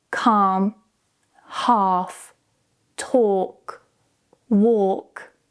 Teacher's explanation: the combination of A and L together, the L is usually silent